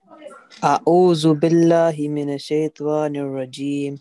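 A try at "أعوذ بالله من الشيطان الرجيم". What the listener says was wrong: No ta, I cannot see any vowel after ta. Is there any ta vowel here?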